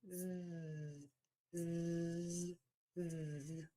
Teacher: So for S, we have no voicing, no vibration of the vocal cords. And for the Z, the voice box is on and moving, and we have vibration. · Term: Z sound